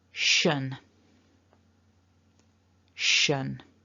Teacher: we've got a very small schwa sound and then that nuh · we've got a sh like when we're telling someone to be quiet we've got a very small schwa sound · And the last syllable, which in my personal experience tends to be the one that gets mispronounced the most, we've got a sh, sh, like when we're telling someone to be quiet, shh. We've got a very small schwa sound and then that n. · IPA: /ə/